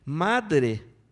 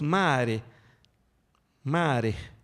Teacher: No tenemos D y todas las Ds las convertimos en glotalizaciones. Entonces, en lugar de decir madre, decimos mare, mare.